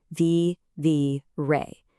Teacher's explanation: Do you hear how we kind of punch that very last syllable? Vi-vi-ré. That little accent mark over the e is your visual guide to getting the pronunciation exactly right every single time.